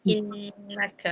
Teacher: Innaka tu dia dengung kan? 2 harakat.